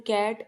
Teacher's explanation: Answer is low front. A in cat is a low front unrounded vowel.